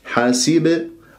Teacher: والباء سكنت في وسط الكلام، إذا قلقلة صغرى، الحروف القلقلة خمسة، قطب وجد، ولما أنا أقلقل ما أمسكها، يعني ما أقف على المخرج.